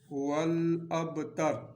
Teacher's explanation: یہ با جو ہے اس پر قلقلہ ہوگا